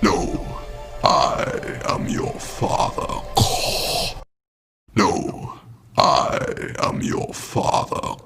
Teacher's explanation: you'll notice that Darth Vader puts stress on the word no. You know, and links know and it together.